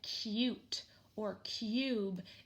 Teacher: in words like cute or cube it sounds like there's a Y